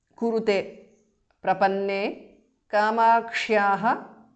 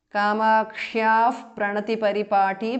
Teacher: kamakshyaha visarga changes to upadhmaniya